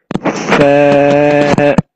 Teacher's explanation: You cannot say sa, but you say sa. The sa comes out when the tip of the tongue touches the edge of the top two front teeth. So the tip of your tongue comes out between your teeth.